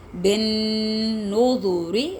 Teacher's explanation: را کے نیچے زیر را باریک